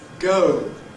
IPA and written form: gəʊ (go)